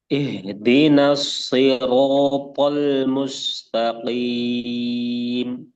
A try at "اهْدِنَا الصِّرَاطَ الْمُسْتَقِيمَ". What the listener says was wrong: di situ ketika to-nya itu pipinya antum seperti yang menggelembung. To, to. Nanti antum melihat kaca. Di sini ada semacam kayak to, Kayak gelembung pas to gitu. Nah, itu kurang tepat. Nanti antum perhatikan lagi makhraj dan sifat huruf to. jadi to itu pipinya nggak menggelembung, nggak sampai bergetar gitu.